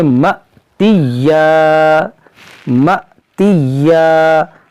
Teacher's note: حمزہ ساکنہ ہے تو اس کو ہم جھٹکا دے کر پڑھیں گے